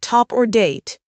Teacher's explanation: the T in words like top or date uses the tip of your tongue behind your upper teeth